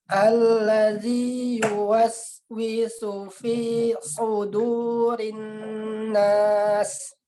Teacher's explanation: Su dengan u, su dengan u. Kalau huruf so itu yang harus kita tekankan adalah pangkal lidahnya, ya, diangkat ke langit-langit biar dia tebal di dalam suaranya.